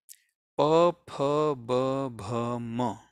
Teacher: त्या अक्षरांमध्ये आपले ओठ एकमेकांना चिकटले, त्यांना म्हणतात ओष्ठव्य.